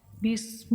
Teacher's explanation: با کو سین سے ملائیں گے لیکن الف نہیں پڑھا جائے گا